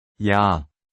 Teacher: Slide quickly from 이, to 아, and you get 야, the sound in 야, ja. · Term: double vowel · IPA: [ya]